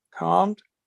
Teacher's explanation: some people don't pronounce that L at all